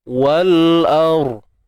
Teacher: Kita punya pangkal lidah tu perlu meninggi untuk mendapatkan suara tebal pada ra tu. Pangkal lidah kita kena naik.